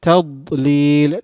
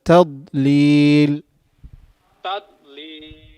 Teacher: Try not to make قلقلة on ضاد, not to bounce it. تضليل, not تض, but تضليل.